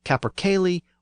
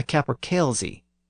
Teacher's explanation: The first pronunciation is the older pronunciation with the Y sound, and the second pronunciation is the newer pronunciation with the Z sound. And that's because it became common to spell that word with a Z at the end in place of the yogh.